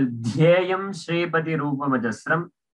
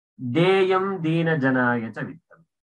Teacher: There is a Mahaprana Dhakara in the second line and there is an Alpaprana Dhakara in the last line. You should not interchange it.